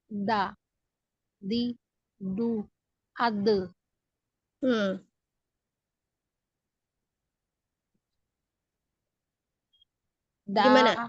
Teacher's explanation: Nah, bunyinya kayak gitu kalau nyentuh gigi seri. Makhrajnya ujung lidah menyentuh tempat tumbuh gigi seri atas. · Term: makhraj dal